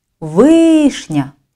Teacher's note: З більшою силою голосу вимовляємо перший склад, наголошений «и»